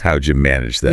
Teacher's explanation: how did you becomes how'd ya with a J sound